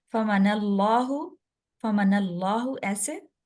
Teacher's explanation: نون کے اوپر شد ہے. دو دفعہ پڑھا جائے گا۔ یہاں دیکھیے غنہ ہوگا، جہاں پر بھی نون کے اوپر شد ہوگا یا میم کے اوپر شد آ رہا ہے تو وہاں پر غنہ ہم کریں گے.